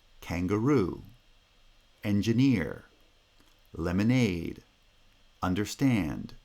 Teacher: receiving primary stress so you get kangaroo engineer lemonade understand so the pitch rises onto the primary stress that you see in the final syllable in these words